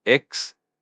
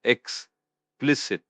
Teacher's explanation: The stress is on the second syllable, explicit. When something is explicit, it means it's stated clearly and in detail, leaving no room for confusion or doubt.